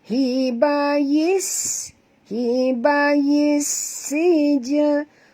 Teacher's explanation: bunyikan safir pada sin. Kerana kita tahu bila ada tasydid maknanya ada dua sin.